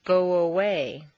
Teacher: if a word ends in o your lips are going to be in the forward position so a w a woo quite naturally leads into the next sound